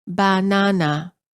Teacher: For example, in many languages, the word banana is pronounced as banana. All three syllables are stressed equally. In English, we pronounce the word as banana.